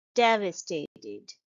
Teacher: the stress is on the first syllable shown by the arrow here devastated and the second syllable is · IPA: /ˈdev.ə.steɪ.t̬ɪd/